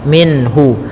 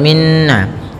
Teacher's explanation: minhun nah khya tebal kemudian minhu ada izhar halqi yaitu adanya nun sukun bertemu dengan ha yang mana Ha termasuk huruf-huruf yang kita keluarkan dari alhalq yaitu tenggorokan kita maka suara nunnya harus jelas minhu tidak boleh ditahan tidak boleh minhu ya tidak boleh Minna